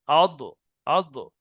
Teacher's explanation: জিভের কিনারা তার বরাবর উপরের মাড়ির দাঁতের গোড়ার সাথে লেগে উচ্চারণ হবে। জিভের এই কিনারা, সেটা ডান কিনারা হতে পারে, বাম কিনারা হতে পারে।